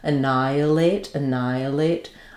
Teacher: So this is an example where we don't really say annihilate. We don't say the h windy sound for the h. Um we stress on the nigh syllable. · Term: h is silent